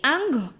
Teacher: इसमें कौवा बीच में ही लटकता रहता है और हवा जो निकलती है वो नाक के थ्रू, हमारे नोज के थ्रू बाहर आती है। तो इसलिए इसे क्या कहेंगे, अनुनासिक स्वर।